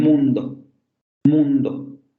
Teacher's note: Si aparece ante una nasal el fonema, entonces la vocal se va a nasalizar. La vocal posterior cerrada, labializada nasal, aparece ante nasales